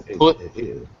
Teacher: Yeah, so you make the T sound, but normally you go T, there's that release. Here it's T, but without the release when it's at the end of a word